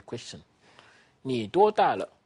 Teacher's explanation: This last syllable is short and light. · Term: toneless syllable